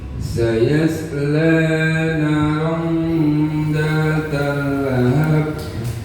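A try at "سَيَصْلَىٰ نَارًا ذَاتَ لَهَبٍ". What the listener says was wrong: La na itu harus sama. Sayasla naron za. Jadi panjangnya sama semuanya. La naron zata. Naron, nanya jangan lupa panjang harokatnya. Sayasla naron zata lahab.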